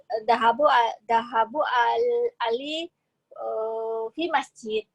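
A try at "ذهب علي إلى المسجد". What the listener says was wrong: Nah, zahaba ya, bukan dahabu ya. Zahaba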